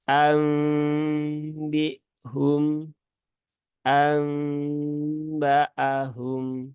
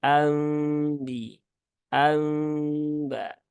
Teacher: ditahan dulu tiga harakat tunaikan gunahnya dan bibirnya dirapatkan secara ringan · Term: iklab